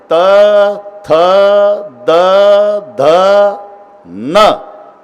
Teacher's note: जिभेचा संबंध दाताशी करून तर पहा प्रत्येक वेळेला आतून धक्का मारते ना जीभ दाताला दाताला धक्का दिल्याशिवाय ही लाईनच होत नाही त थ द ध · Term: दंत्य